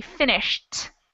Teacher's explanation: since this verb ends in sh it's going to be pronounced like a t